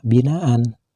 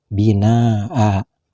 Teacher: Dan dengan kalimat binaan, bila dihentikan membacanya juga tidak boleh dibaca binaan, akan tetapi harus dibaca binaa, panjang 1 alif atau 2 harkat seperti panjangnya bacaan mad tabi'i